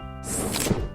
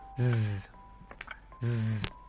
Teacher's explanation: s gives you the friction, but z gives you the friction and voice as well.